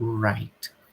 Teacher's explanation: E já o R, ele gera uma vibração na garganta. Então, a gente chama de voiced.